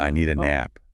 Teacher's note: The D at the end of need just blends right into the A. It makes the speech much more fluid, less choppy. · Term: linking sounds